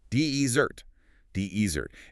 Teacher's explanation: for desert, the dry, sandy landscape, the stress is on the first syllable